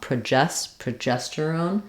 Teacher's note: So not pro, I don't need a clear vowel there, but rather pra with a schwa